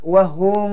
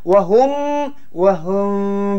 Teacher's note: mim diikhfkan di sisi ba serta didengungkan dua harakat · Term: Ikhfa Syafawi